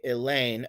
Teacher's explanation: When you say Elaine aloud, the emphasis is on the second syllable. So I might indicate the stressed and unstressed syllable by saying you slash or unstressed stressed.